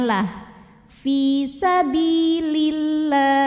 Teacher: Allah dibunyikan secara tarqiq sebab huruf sebelumnya berbaris kasrah, maka huruf lam bacanya tipis, bunyinya lah.